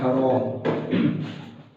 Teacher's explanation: रा जिस तरह हम उर्दू में अदा करते हैं, और ये मोटे रूप में आ जाता है